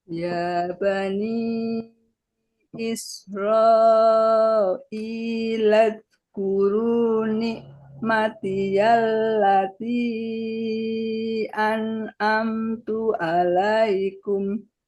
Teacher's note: isro i-nya panjang dulu satu ayunan baru masuk lazkuru